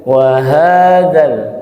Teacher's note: wawnya sedikit diturunkan atau didatarkan, haknya naik.